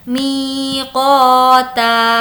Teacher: می کو کھینچیں گے کیونکہ یا مدہ ہے